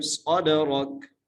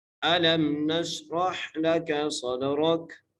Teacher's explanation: صاد کو موٹا کر کے پڑھنا ہے اور صاد کو دال سے ملانا ہے۔ صاد را کو موٹا کر کے پڑھنا ہے اور کاف کو جو ہے وقف کی صورت میں ہم ساکن کر دیں گے۔